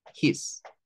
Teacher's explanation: esa s de acá del final va a sonar como una como una Z es decir es la s con el sonido vibrante